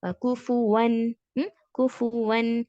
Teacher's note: اظہار حلقی ہے، یعنی ہم ظاہر کریں گے یہاں پر جو کوفو ون، کوفو ون. نون کو ہم چھپائیں گے نہیں، نون کو کلیئرلی پروناؤنس کریں گے. کوفو ون، ون، ون.